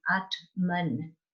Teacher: it's a long a the t and the m are joining together and that n doesn't have an a on the end atman so this is where we get into these conjunct consonants · you start with your long a ah and then now your t has to blend in to the m